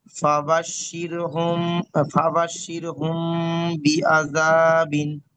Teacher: মিম সাকিনের পরে বা এসেছে, তাই মিমকে মানে এক আলিফ পরিমাণ গুণনা করে করতে হবে